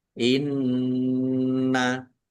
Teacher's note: Nun tasdid dibaca gunah atau mendengung. Ditahan biar tampak mendengung.